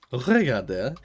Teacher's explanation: I have to remember not to pronounce the last R.